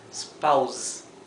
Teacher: La S final suena vibrada, zzz, como el zumbido de una abeja.